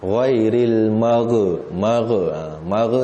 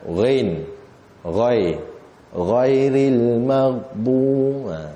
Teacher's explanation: Ghain pun kena pekatkan ataupun tebalkan. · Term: huruf ghain